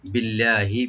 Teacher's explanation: ইয়াহলিফুনা বিল্লাহি, বিল্লাহি বি বলবো, আল্লাহ জালাল এখানে লাইট করে পড়বো আমরা